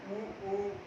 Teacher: हमारे जीभ का जो पिछला हिस्सा है वहां से ये उच्चरित हो रहा है